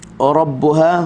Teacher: huruf ra dibaca dengan tebal, hujung lidah kena dengan langit atas